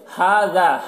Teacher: ہا اور ذا دونوں کو ایک الف کے برابر کھینچ کر پڑھیں گے